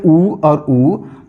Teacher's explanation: जब भी हम बोलते हैं उ और उ तब होठ एक गोल आकार ले लेता है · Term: ओष्ठ